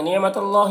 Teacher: अल्लाह को पुर पढ़ेंगे, खड़ा ज़बर है, एक अलिफ के बराबर खींचेंगे।